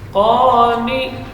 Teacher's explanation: Qa panjang dua harakat. Kemudian nun ni huruf tawassut baina syiddah wal rakhawah.